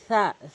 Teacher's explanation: সা একদম নর্মালি জিব্বার আগা দাঁতের আগা থেকে।